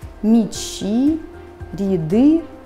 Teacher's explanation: Слышу неясный звук «и».